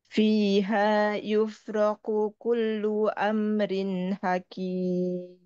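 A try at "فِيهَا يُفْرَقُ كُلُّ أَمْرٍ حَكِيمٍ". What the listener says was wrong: Afan, untuk qaf dan kafnya agak terdengar sama ya.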